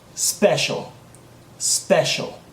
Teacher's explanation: there is no e sound that comes before